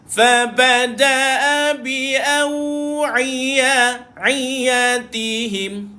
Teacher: Jangan pergi hidung. Ain dia tak duduk dekat hidung. Ain dia duduk dekat hujung tengah kerongkong.